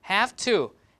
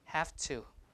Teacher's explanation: neighboring sound is have to have is usually V sound right V is a voice sound but the next sound is a t so the V cannot stay as voice as it is so it has become a voiceless have to like that okay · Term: voicing assimilation